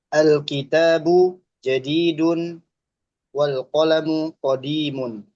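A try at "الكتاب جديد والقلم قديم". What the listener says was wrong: Masya Allah, mumtaz.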